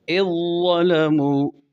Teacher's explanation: ذال اور ظا دونوں کا مخرج ایک ہے، ذال ظا میں داخل ہو گیا، پہلے کی کوئی صفت باقی نہیں، اس لیے اس کا نام ادغام متجانسین تام ہے۔